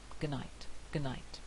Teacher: in good night we very rarely hear the d unless it's spoken very carefully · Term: loss of this consonant